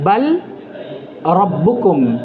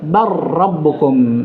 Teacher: Syahidnya bar rabbukum, asalnya bal rabbukum, tapi karena dia diidgham, lamnya dihilangkan, lafadznya, dan dimasukkan kepada ra.